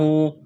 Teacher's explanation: ہا کے اوپر کڑا زبر ہے، ایک الف کے برابر کھینچنا ہے